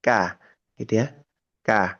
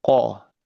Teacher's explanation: huruf qof itu lebih ditelan lagi qo lebih dalam gitu ya.